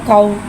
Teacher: वाव साकिन है, वाव साकिन से पहले ज़बर आ रहा है, वाउलिन हो रहा है, लिहाजा वाउलिन को बगल खींचे, बगल झटका दिए नरमी से मारूफ पढ़ेंगे और वाउलिन को होठों की गुलाई के साथ अदा करके पढ़ेंगे।